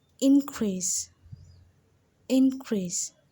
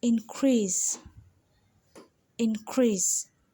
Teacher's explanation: When you're using it as a noun, the in increase is stressed more.